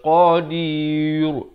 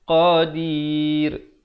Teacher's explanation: Kerana qaf merupakan huruf isti'la, dan qadir, ra-nya dibaca nipis. Jangan baca qadir, itu tebal, salah.